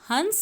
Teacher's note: जैसे अगर हम हंस का वर्ण विच्छेद करेंगे तो आप देखेंगे अ के बाद न की आवाज आ रही है और यही न अनुस्वार के रूप में प्रयोग होता है